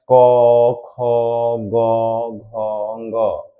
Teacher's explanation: क ख का उच्चारण स्थान कंठ है